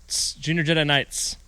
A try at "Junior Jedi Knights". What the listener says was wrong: You snuck that S in there on the end, didn't you? Yes, Junior Jedi Knights. There are after 2 of them.